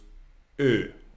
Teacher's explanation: it's like you put your mouth like O, but you want to say E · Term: O umlaut